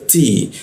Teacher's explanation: T ujung lidah bertemu gigi dia